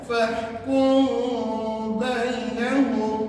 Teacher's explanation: hukum ini mesti dibaca dengan dengung dua harakat